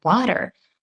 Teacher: So we don't even say t, but like a flap t, like a d sound in the word water.